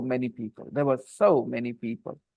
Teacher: when you use this word so and such in the sentence, it gets the most stress in the sentence.